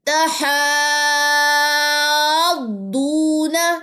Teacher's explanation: مد لازم کلمی مثقل ہے، 6 سیکنڈ لمبا بھی کریں گے اور ساتھ میں آپ نے اس پہ دعا جزم پہ آتے ہوئے نبر بھی لینی ہے.